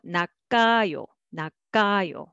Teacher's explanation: ㄲ will be carried over and pronounced as the second syllable.